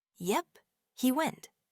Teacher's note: But if your voice falls, it's a simple statement confirming that he went.